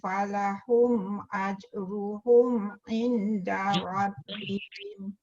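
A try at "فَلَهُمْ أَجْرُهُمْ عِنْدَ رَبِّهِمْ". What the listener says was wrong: Tu dengung sikit. Falahum ajruhum 'inda rabbihim.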